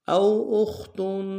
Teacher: اخت میں خا کو موٹا ادا کریں گے